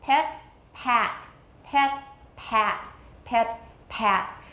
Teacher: Since your tongue is lower for pat, your whole jaw goes down.